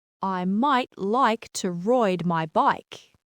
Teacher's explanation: In a general American accent, it's a pretty clean I sound, but in Australian English, it starts further back in the throat, almost like an oi sound. So right sounds more like roit. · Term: long I sound